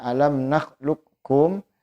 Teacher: alam nahlukum yaitu hukumnya bisa dibaca dengan dua cara yang pertama idgham naqis dengan cara qofnya dibaca tanpa dipantulkan tanpa Qalqalah kemudian masuk ke Kaf contohnya alam nahlukum itu cara baca yang pertama kemudian cara baca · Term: idgham nakis